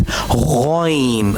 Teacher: ghain will also pronounce from the upper portion of throat.